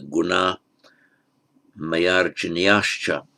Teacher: So it would on its own be gunah, masculine, singular, but it's followed by a voiced consonant, m, and therefore the visarga disappears